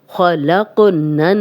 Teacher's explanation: تو ہم غنہ کرتے ہیں، خلقنن خو کو موٹا پڑھیں گے، قوف پہ کلکلا ہے، اس پہ جزم آ گئی ہے، ہلا کے پڑھیں گے ، خلقنن نون کی زبر نون سے ملے گی، بیچ میں